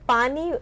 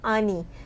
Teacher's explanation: मतलब कि इनिशियल के जो कॉन्सोनेंट्स हैं, जैसे पानी अगर कोई वर्ड है तो हो सकता है जो हियरिंग इम्पेयर्ड बच्चा हो, बहुत कॉमन देखा जाता है, वो बोलेगा आनी, तो जब प का इनिशियल कॉन्सोनेंट है वो मिस कर देगा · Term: ओमिशन ऑफ इनिशियल एंड फाइनल कॉन्सोनेंट्स